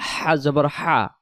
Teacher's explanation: হলকের শুরু হতে সহজ আওয়াজে হা